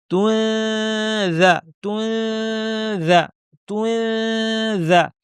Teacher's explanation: কারণ তানবিনের পরে দাল এসেছে তাহলে দালের মাখরাজে জিহ্বা নিয়ে অর্থাৎ জিহ্বার শীর্ষ উপর পাটে দাঁতের শীর্ষে লাগিয়ে রেডি করে নাক থেকে গুণনা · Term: ইখফা